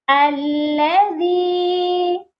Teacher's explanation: زال کو نرمی سے پڑھنا ہے